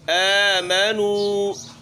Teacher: واو ہے اور نون ہے ساتھ میں، اس کے اوپر پیش ہے، تو ہم نے ہونٹوں کو بھی یہاں گول کرنا ہے۔